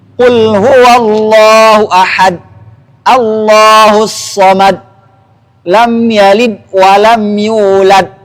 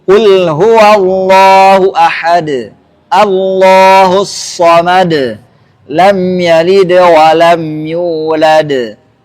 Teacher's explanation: Maka harus ada qalqalah. Dalnya bunyi qalqalahnya harus jelas.